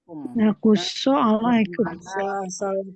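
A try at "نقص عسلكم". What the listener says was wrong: Asalakum, bukan alaikum ya. Asalakum. Naqussa asalakum. Naqussa asalakum.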